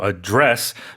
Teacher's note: So in this case, it's a verb, of course. So we put the stress on the second syllable.